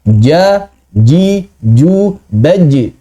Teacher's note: Jim itu murni syidah tidak memiliki sifat rakhwah sedikit pun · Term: murni infijar